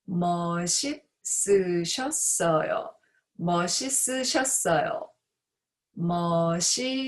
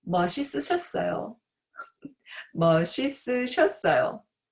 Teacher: the consonant 받침 시옷 or 멋, shift to the next zero consonant, and then the 받침 쌍시옷, the second syllable, shift to the next zero consonant, and then the 쌍시옷 on the fourth syllable, shift to the next zero consonant.